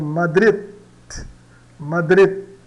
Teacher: O D não não chega a ser pronunciado, mas ele fica pronto para ser pronunciado praticamente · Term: O D no final